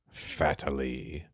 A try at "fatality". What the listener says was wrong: no, you're missing a T. Fatality.